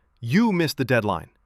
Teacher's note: Heavy stress on you. It felt like blame. I repeated, "We missed the deadline," then offered, "I can handle the next handoff." The stress shift changed the mood from attack to repair.